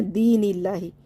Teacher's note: دونوں یا مدہ ہیں، ان کو کھینچنا ہے، فی دین اللہ، لفظ اللہ کے نام سے پہلے زیر ہے اس لیے اس کو باریک کرنا ہے